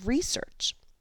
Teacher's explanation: the first syllable, re, is stressed a little more loudly and a little more slowly